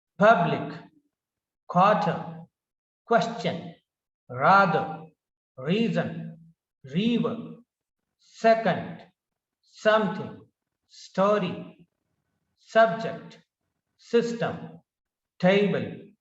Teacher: So the stress is given on first syllable.